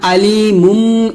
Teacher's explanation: মিমের উচ্চারণ দুই ঠোঁট মিল করে উচ্চারণ করতে হয়